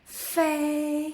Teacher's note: your upper teeth touch your lower lip exactly like the F in father.